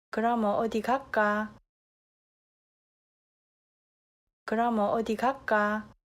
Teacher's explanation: the diphthong vowel 여 in 그러면 is replaced with a simpler vowel